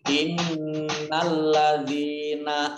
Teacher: inna nunnya ada tasdidnya dibaca gunnah atau berdengung, ditahan 2 harokat. Lamnya ada tasdidnya juga dibaca double.